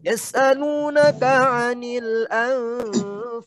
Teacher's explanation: Jadi huruf nun, mulutnya huruf nun mempersiapkan masuk ke huruf fa. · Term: samar-samar